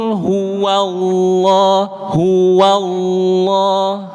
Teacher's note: Suara yang menebal itu ada pada lafaz lohnya, tetapi wawunya hua itu jangan ikut menebal, Pak.